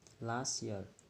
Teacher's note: We don't pronounce it. So we just pronounce last year without T.